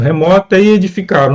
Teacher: Nós temos ali a elisão, marcando a fusão ali, a mistura, a contagem em uma única sílaba, das sílabas tá e E, ok? Nós temos ali e edificaram, a última sílaba, a última palavra é também uma paroxítona.